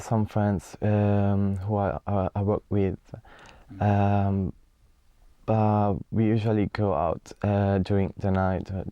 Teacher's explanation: very clear but again rather monotonous intonation perhaps he needs to sound more lively